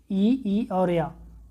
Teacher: ई को देख लेते हैं कौन सा वर्ण है या कहाँ से उच्चारित होता है, तो ये तालव्य वर्ण है। तालव्य वर्ण है, तालु से उच्चारित होता है